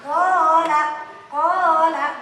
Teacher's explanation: Alif sebelum berharokat fathah, ya sebelum berharokat kasroh, wawu sebelum berharokat dhamma. Panjangnya berarti harus 2 harokat. 1 ayunan, 1 alif, 2 harokat. Tidak boleh kurang, tidak boleh lebih. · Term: mad asli